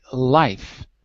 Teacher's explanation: if you say life your tongue is touching the alveola ridge on the top